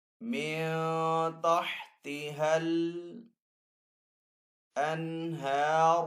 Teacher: من تحتها الانہار، ہا کے اوپر یہاں پہ کھڑا زبر ہے تو ہا کو ایک الف دو حرکات کے برابر کھینچ کر ادا کریں گے